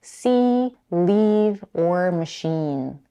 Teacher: we start with the high e vowel that comes in words like see leave or machine then we attach the lower lip to the upper teeth to